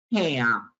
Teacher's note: I'll make that sound because I need to have a stream of air through the nose. If you close your nose, if you plug your nose, you can't say it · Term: nasal